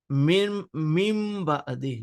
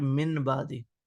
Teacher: Noon sakin is followed with ba. That's the reason noon is converted into meme.